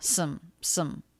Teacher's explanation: I would actually write that with the schwa, some. It's flatter in pitch. I think the vowel is not full.